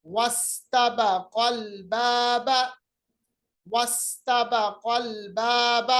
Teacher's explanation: तो अल बाबा के शुरू का जो हमजा है उसको हम कहते हैं हमजा वसली, यानी दरमियान कलाम में आ जाने की वजह से वो हाज़िफ हो गया, जिसकी वजह से दो साकिन जमा होने की सूरत पैदा हो गई।